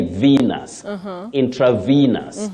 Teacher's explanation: That letter E takes what we call the long high front sound E